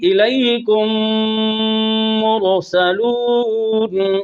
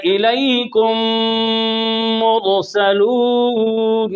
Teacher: اب یہاں پر ایک الف غنہ کرنا ہے